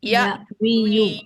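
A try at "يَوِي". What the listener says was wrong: Harokat huruf sia di akhir dibuang sehingga jadi iya, wi. Tapi bacanya agak dipanjangin ya. Iya, wi.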